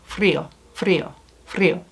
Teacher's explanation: like a little short trill to the r. So it's not at the back of the throat, like R. It's not there.